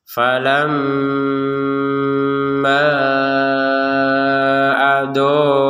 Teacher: Kemudian di sini harokat bendera, di sini ada panjang dari ma ini yang kita baca 2 harokat barusan itu, karena digabungkan dengan hamzah maka panjangnya 4 sampai 5 harokat. Jadi harokat benderanya berfungsi ketika kita menggabungkan panjang dari ma dengan hamzah.